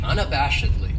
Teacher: This adverb has 5 syllables, and the stress is on that third syllable